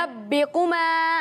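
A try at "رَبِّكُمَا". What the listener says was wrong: را کو موٹا کریں.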